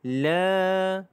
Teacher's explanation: La itu dibaca dengan panjangnya adalah 2 harakat kerana mad asli huruf alif.